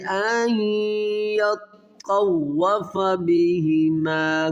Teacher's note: یہاں پر ادغام غنہ کیا جائے گا، نون ساکن کے بعد حروف یرملون میں یا ہے